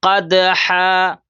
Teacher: اب دال بھی حروف قلقلہ میں سے، اس لیے قلقلہ کریں گے